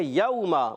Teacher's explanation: واو ساکن سے پہلے زبر، واو لین ہوگا، بغیر کھینچے ادا کریں گے نرمی سے